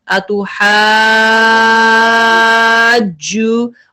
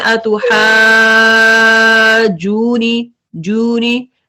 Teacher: مد کے بعد جیم پہ شدہ ہے اتحاجو اور جیم کو ہارڈر آپ نے پڑھنا ہے سختی سے پڑھنا ہے کیونکہ اس پہ شدہ ہے. کچھ پڑھتے ہیں اتحاجونی جونی ایسے نہیں پڑھیں گے اس کو جیم پہ شدہ ہے تو اس کو شدہ والا اس کو رول دیں گے جونی جونی اور غنہ بھی کریں گے نون کو.